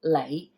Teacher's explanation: light has a little bit of up tone at the end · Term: low rising